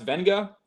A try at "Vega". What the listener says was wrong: Think of Tua Tagovailoa. There's no N in there either.